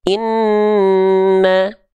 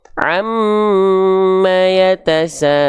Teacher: kalau nun dan mim dia ditahan 2 harokat. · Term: gunnah